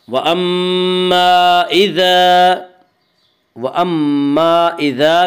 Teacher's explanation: مد منفصل وہ مد ہے جس میں حرف مد کے بعد حمزہ دوسرے لفظ میں ہو۔ مد منفصل میں حفص کی روایت میں بطریق شاطبیہ صرف توسط ہے، اور توسط کی مقدار وہی 2 الف، 2.5 الف اور 4 الف ہے، اور بطریق جزری قصر اور توسط دونوں جائز ہیں۔